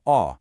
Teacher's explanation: Then you have A, which is a really open A sound, kind of like in the word cot.